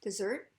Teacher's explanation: dessert is focused on the second syllable